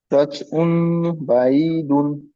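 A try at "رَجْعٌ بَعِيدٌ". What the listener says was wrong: জিমের উচ্চারণটা একদম আসছে না, রচ রচ আসছে। রজ। রজ। চ এসে যাচ্ছে, চ নয়, বর্গিন জ। বর্গিন জ, রজ। চ এসে যাচ্ছে, রচ রচ হয়ে যাচ্ছে, রজ। রজ।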